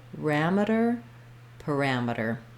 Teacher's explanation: we have second syllable stress, second syllable stress, so ram is stressed. That means this first letter A is not going to say a or a.